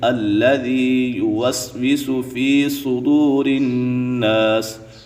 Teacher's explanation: یا مدہ ہے تو یا مدہ کو ایک الف کی مقدار کھینچ کر پڑھیں گے